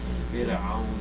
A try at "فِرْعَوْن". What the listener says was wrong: معلش lower the راء.